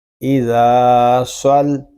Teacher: صاد کو پر پڑھیں گے اور صاد کو لام کے ساتھ ملا کر پڑھیں گے کیونکہ لام مشدد ہے، اور مشدد حرف اپنے سے پہلے والے متحرک حرف سے مل کر پڑھا جاتا ہے۔